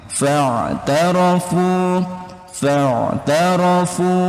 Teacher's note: Nah, ini ada huruf ain, jangan sampai berubah jadi hamzah